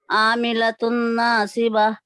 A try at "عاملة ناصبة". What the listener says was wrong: سواد کا مخرج صحیح لیجئے.